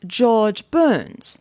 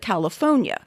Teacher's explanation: The locals would pronounce it rhotically, but the British, being non-rhotic, do not pronounce the R. Both pronunciations are valid.